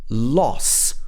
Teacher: if this was in the british accent it would be loss with the o sound